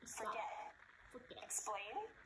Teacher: Can you hear the stress on the second syllable?